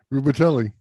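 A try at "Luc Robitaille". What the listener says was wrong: Rubatelli. Because he pronounced every letter exactly how it is, how it's spelled. The man's name is Luke Robitaille. There's an L in it, but there's no L said.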